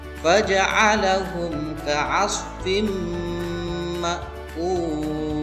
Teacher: suara tanwinnya dimasukkan ke dalam suara berikutnya, yakni pada huruf mim disertai dengan dengung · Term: idgham bi gunnah